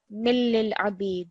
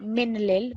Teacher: So the kasratain is underneath this. When you join it with a lam mushaddad, the way you read it is, again, you're not going to hear the tanveen, so you would read it as millil abid.